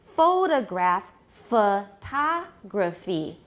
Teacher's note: the unstressed syllables in both case become schwas